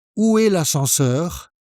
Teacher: Make sure you have a slightly rising intonation at the end.